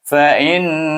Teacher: Innama fa, mahraj fa bunyinya fa, mahraj hamzah bunyinya i, tapi dia bertemu ditasydidkan dengan huruf nun, maka kita baca dia dengan wajib bergunah, iaitu dengungkan nun dia